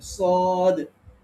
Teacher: সদ যখন আমরা পড়বো তখন এটার আওয়াজটা পোর বা মোটা হবে